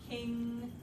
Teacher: your tongue is pushed up against your soft palate and you're letting the air come out through your nose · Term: velar nasal